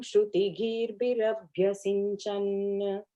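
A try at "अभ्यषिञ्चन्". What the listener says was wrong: The last line word Shinchan, not Sinchan. Sha, the big Sha is coming. Shinchan, correct. I think I was reading it as Sinchan.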